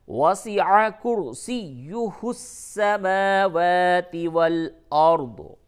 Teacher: وسع عین حلق سے ادا ہوگا